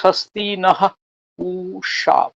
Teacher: এখন পরিষ্কার আছে স্বস্তিনঃ উষা, মূর্ধন্য ষ, পরিষ্কার মূর্ধন্য ষ, কিন্তু আমি দেখছি ঋগ্বেদীয় উচ্চারণ করছেন স্বস্তিনঃ উখা।